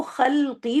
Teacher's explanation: تو خلقی لام ساکن کو ساکن ہی رکھنا ہے